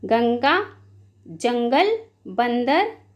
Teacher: उच्चारण करते समय वायु नाक से बाहर निकलती